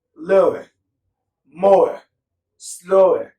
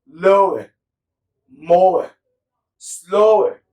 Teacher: vowel number 22, is now the schwa sound moving into the oo